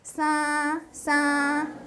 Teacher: It's a nasalized vowel, and notice how high it is. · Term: high level tone